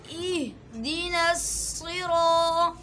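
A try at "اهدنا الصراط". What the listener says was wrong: سی نہیں صاد، اہدنا الصراط، نصراط، یہاں حمزہ ہے مضبوطی سے، آگے پھر ہا ہے، چونکہ حمزہ اور ہا کا مخرج ایک ہی ہے، ایک ہی جگہ سے یہ دونوں حروف ادا ہوں گے۔ اہدنا الصراط، صراط،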